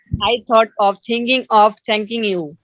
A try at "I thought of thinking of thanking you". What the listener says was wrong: I thought of, এখানে একটা break নিয়েছেন, ব্রেক নেওয়া দোষের না, কিন্তু ব্রেক একটু অমসৃণ হয়। I thought of thinking of thanking you, এরকম হবে।